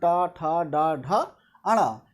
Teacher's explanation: ये दांत के जो निचले मसूड़ा होता है उससे उच्चारित होते हैं, उसको कहते हैं मूर्धा।